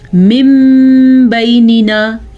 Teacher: نون ساکن یا نون تنوین میم میں بدل جاتے ہیں، جیسا کہ یہاں پہ ہمارے پاس نون ساکن میم میں بدل گیا ہے. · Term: اقلاب